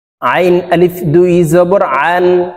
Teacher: আইনকে চাপ দিয়ে উচ্চারণ করতে হবে, আইনের মাখরাজ হলকের মধ্যখান থেকে উচ্চারণ হবে।